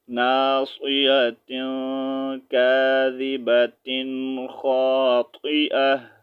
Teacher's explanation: تا جو ہے، اس کا ساؤنڈ ہا میں چینج کریں گے